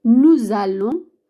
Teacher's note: hay que hacer la liaison, la unión de la S con la A.